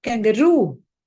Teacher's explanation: The stress is on roo.